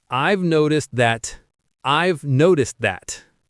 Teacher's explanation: The stress is on no in noticed. Notice how noticed that almost blends, and the T in noticed can sound a bit like a D in American English.